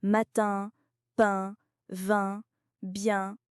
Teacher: Et il ne faut pas dire pain comme en espagnol ou en portugais. Le son sort aussi par le nez. C'est une résonance nasale comme dans matin, pain, vin, bien.